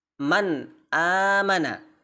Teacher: huruf nun itu ketika bertemu hamzah harus dibaca man, jelas, nunnya jelas, hamzahnya juga jelas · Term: idhar halqi